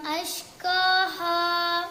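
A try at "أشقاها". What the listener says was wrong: ഖ അല്ല ഖ, പുള്ളിയുള്ള ഖാഫാണ്.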